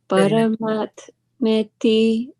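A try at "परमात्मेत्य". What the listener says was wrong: So this is TY will be Tya. Paramatmitya udaritaha yolokotrayam avishya vibhartya vyaya ishvaraha.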